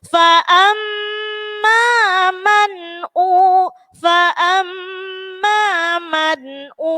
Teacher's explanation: Jadi bunyinya fa'a. Fa'amma, mim tasydid dibaca gunnah menenggung. Fa'amma man'u, fa'amma man'u, izhar, panjang ada wawu sukun, dummah diikuti wawu sukun.